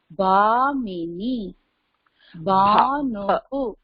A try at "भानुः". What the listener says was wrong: இது மகாபிராணா அதனால பா அப்படின்னு சொல்லணும்